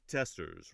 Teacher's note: You have the accented syllable on the test part.